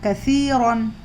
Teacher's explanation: اور یا مد ہو رہا 2 حرکت کھینچنا ہے، اور را پر 2 زبر کی تنوین ہے، نون کی آواز سنائی دے گی